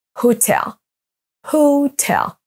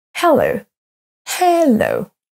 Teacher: Les deux mots à l'écran maintenant sont accentués sur la deuxième syllabe